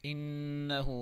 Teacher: نون مشدد ہے، ہمیشہ غنّے کے ساتھ پڑھیں گے